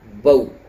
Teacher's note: اچھا، آواز معروف رہے گی، یعنی زبر کی آواز نکالنے کے بعد جب واو کی آواز نکالیں گے تو جو واو کی آواز دونوں ہونٹوں کو گول کرنے سے نکلتی ہے اسی طرح نکلے گی، او کی آواز نہیں بنے گی۔ یا کی آواز جو پوری طرح لٹا کر کے ای کی شکل میں نکلتی ہے ویسے نکالیں گے، اے کی شکل میں نہیں نکالیں گے۔ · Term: حروف لین